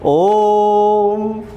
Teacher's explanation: ओ पे आपने 3 सेकंड का समय लगाया, इसलिए ओ प्लुत हो गया · 3 सेकंड का समय जो स्वर ले रहा है वो प्लुत हो जाता है